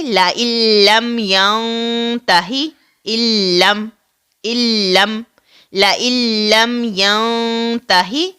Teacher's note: ادغام بغیر غنہ کے ادا ہوگا، یعنی ادغام کامل ہوگا · حمزہ اور لام کو ملائیں گے، نون ساکن کو نہیں پڑھیں گے